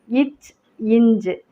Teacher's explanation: நாவின் இடை அன்னத்தின் இடை